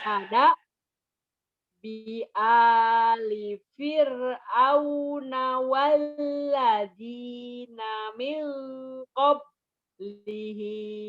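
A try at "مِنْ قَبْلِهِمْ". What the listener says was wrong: Qalqalahnya mana? Himnya salah. Kada bi ali fir'auna walladzina min qablihim. Pendek. Kenapa jadi panjang? Min qablihim. Pendek.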